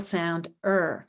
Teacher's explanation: what do I see I see that the graphine eer represents The R controlled vowel ER which is so unified that it is represented as one sound not a vowel and consonant combination as it looks like in print but a single sound ER